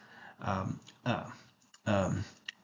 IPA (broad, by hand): ə